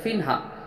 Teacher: 2 زیر کی تنوین کے بعد حروف حلقی کے 6 حرف میں سے ہا آیا، تو ہم اسے ظاہر کر کے بغیر غنہ کے جلد ادا کریں گے